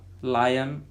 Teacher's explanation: uh consonant means the tongue touches so touches the teeth and the air passes through both side of tongue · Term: lateral